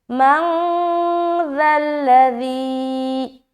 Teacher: نون ساکن کے بعد حرف ذال آ گیا، تو یہاں پر اخفا کریں گے کیونکہ ذال بھی حروف اخفا میں سے ایک ہے۔